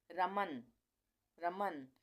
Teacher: र म के बाद अ आ रहा है म के बाद भी अ आ रहा है और न के बाद अ का उच्चारण नहीं आ रहा है इसलिए हम यहां पे आर ए एम ए और सिर्फ यहां